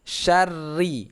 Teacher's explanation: Di sini banyak yang baca wa min syari, bukan syari bacaannya tapi syarri, ada tasydid. Syarri, ada getarnya, ya. Jadi usahakan tasydidnya jangan hilang.